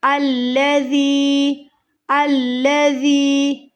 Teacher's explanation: وَرَبُّكَ الْأَكْرَمُ، رم، پھر نیو سرے سے آیت شروع ہوگی، الذی، الذی، ذال کو نرمی سے ادا کریں گے، دونوں دانتوں کے درمیان زبان کی نوک کو رکھتے ہوئے